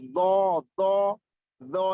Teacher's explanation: do itu yang ujung lidah keluar sedikit dan menyentuh gigi seri atas itu, dan pangkal lidah terangkat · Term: Huruf do